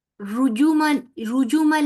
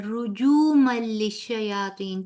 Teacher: جیم پیش جو ہے نا، تو یہاں پہ 2 حرکت برابر لمبا کریں گے